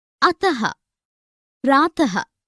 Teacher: इसका प्रयोग व्यंजन के बाद किया जाता है। इसका उच्चारण ह की तरह होता है। अह का चिन्ह यह 2 बिंदियां हैं, जैसे अतः, प्रातः आदि। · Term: विसर्ग